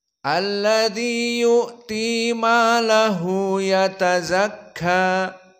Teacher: ya Hanya dua harakat saja maahu yatazakka maahu ya seperti itu adapun yatazakka fakadalika kulluha muraqoqoh ya Ta Zai Kaf dan Alif maka semuanya muraqqoh maka di sini cukup dibaca dengan mad thi'i yatazakka maka selesai